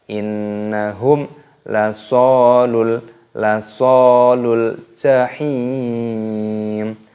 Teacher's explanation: mim sukun bertemu dengan huruf lam, yaitu dibaca idhar syafawi. Jadi tidak boleh dibaca berdengung, harus dibaca jelas